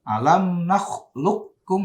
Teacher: langsung masuk ke kaf ya. Jadi qafnya dileburkan. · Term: idgham mutaqaribin